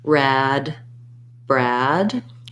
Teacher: Also, you can think about if the BR blend is giving you trouble, trying just to say rad, start on the R, rad, and then add your B, rad, Brad. When I'm saying Brad, my tongue is already in the R position at the start of the word. So I just close my lips to make the B, rad, Brad.